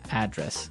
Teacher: your home address where you live Y and there the stress is on the first syllable